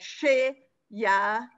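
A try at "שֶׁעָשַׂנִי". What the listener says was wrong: It's not Yah. That's an ayin. Yeah, ayin is silent. It just looks like a Y.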